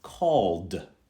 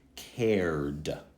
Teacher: it can sound just simply like duh, just duh, not id, just duh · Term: duh sound